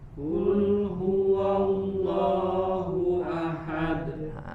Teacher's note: Ditebalkan lafzul jalalah pada huruf lamnya.